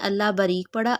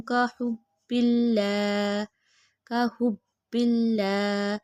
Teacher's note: اللہ سے پہلے حرف کے نیچے زیر آ گئی، اسی لیے اللہ باریک پڑا